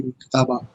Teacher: کتابہ 2 حرکات، الف مدہ. صحیح، جب بھی 2 زبر آ جائیں گے نا اس کو وقفی صورت میں پھر 2 حرکات دی جائیں گی، الف مدہ کی طرح پڑ جائے گا